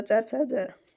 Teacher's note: च छ झ झ ञ का उच्चारण स्थान होता है तालु से। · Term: तालव्य व्यंजन